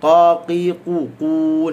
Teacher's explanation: Qaf pula qaqiqu, qun. Jangan qun, jangan kat depan, dia mesti di pangkal.